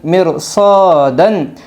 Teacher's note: رائے ساکنہ کے بعد حرف مستعلیہ کے 7 حرفوں میں سے صاد آئی ہے، اس لیے رائے ساکنہ پر ہوگی